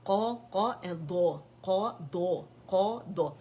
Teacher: قاف موٹا ہے لیکن دود اس سے بھی زیادہ موٹا ہے کیونکہ زبان میں ڈپ بنتی ہے, اطباق ہے اس کے اندر